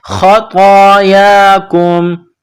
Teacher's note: یا کے اوپر کڑا زبر ہے، ایک الف کی مقدار اس کو کھینچنا ہے